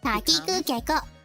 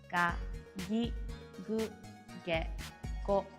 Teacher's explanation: The K sound becomes a G sound. We call this voicing.